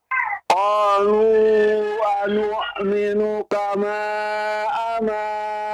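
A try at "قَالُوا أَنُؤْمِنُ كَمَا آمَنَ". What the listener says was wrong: A-nya panjang, A-nya. Ada alif di sana. Kama panjang maknya.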